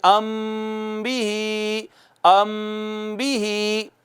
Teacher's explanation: جب میم ساکن کے بعد صرف با آئے گا، ایک ہی حرف، ایک حرف، ایک حرف، زیادہ نہیں، تو میم ساکن پر آواز کو ایک الف کے برابر چھپا کے پڑھیں گے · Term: اخفا